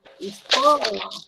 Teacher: escola, o có, que é a sílaba tônica